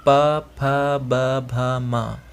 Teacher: इसका उच्चारण स्थान है ओष्ठ। मतलब प वर्ग का आप उच्चारण करेंगे तो आपका दोनों होंठ जो है वो आपस में मिलेंगे